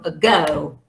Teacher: the schwa is at the beginning